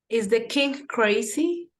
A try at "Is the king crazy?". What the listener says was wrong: Okay, remember that there is an ing. Don't forget there's a G, a king, crazy.